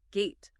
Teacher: That final puff of air just isn't there. This stopped T is crucial for sounding fast and natural.